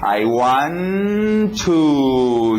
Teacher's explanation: Tá bom, já decidi, vai ser um to. 2 T's, eu não preciso dizer 2 T's, posso fazer um só.